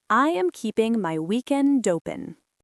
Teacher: link the D at the end of weekend with the O at the beginning of open. Weekend open.